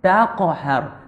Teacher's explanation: itu dia qaf, huruf isti'la kena angkat.